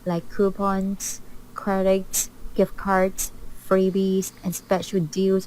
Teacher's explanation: her voice is so flat when she lists